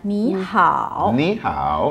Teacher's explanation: it will be naturally the first word will become the second tone. So it will sound like ni hao.